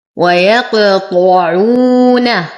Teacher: ويقطع نفخم الطاء فهو أقوى الحروف. ويقطعون واو ساكنة ما قبلها مضموم فهو من الطبيعي حركتين، نرقق الواو والنون.